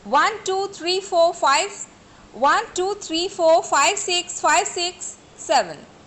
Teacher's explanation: the last digit falling tone is used, and the rest rising tone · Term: statement of a number